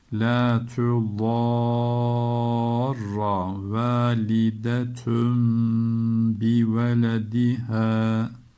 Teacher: İklap yaptık. Tenvinden sonra B harfi geldiği için.